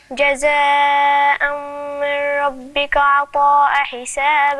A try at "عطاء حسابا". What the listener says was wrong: لا، إزاي؟ هو أنت تشيلي التنوين وتحطي التنوين؟ ليه ؟ عطاء أنا عندك عليها إيه؟ تنوين إيه؟ مفتوح ولا مضموم ولا مكسور؟ مفتوح، يبقى أنا عندي تنوين، تمام؟